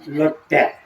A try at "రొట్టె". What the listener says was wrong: లొట్టె అనరు, రొట్టె అంటారు. నా మాట విని రొట్టె. రొట్టె. లొట్టె కాదు, రొట్టె. రొట్టె అని. రొట్టె. రొట్టె.